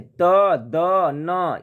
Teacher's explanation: त, द, न, ये दंत से उच्चारण होता है